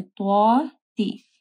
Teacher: پھر طوا کو موٹا پڑھنا ہے، تا کو نرم پڑھنا ہے،